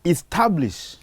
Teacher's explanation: The word reads establish, so you put a stress on the second syllable